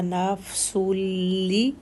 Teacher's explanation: نفسن آگے لام آ گیا تو سن کا جو نون ہے وہ ختم ہو جائے گا لام کی وجہ سے